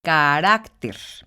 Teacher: el acento gráfico de las palabras graves es por ejemplo carácter como podemos ver la sílaba tónica se encuentra en la penúltima sílaba por lo tanto es una palabra grave y cumple con la regla porque no termina ni en n